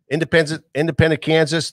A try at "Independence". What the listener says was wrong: Independence. You said independent. Independence.